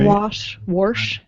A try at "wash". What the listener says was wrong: Warsh. There's no R in there. It's wash. There's no R.